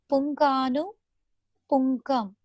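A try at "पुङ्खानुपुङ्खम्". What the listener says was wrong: Punkhanu punkham. It is punkhanu punkham. Kha, not ga. Punkhanu punkham.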